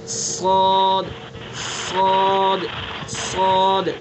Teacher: بس صاد کو جو ہے پر کر کے پڑھیں گے، منہ بھر کے پڑھیں گے.